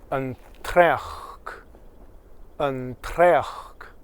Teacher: So the N, actually the N sound sounds more like an R in that case.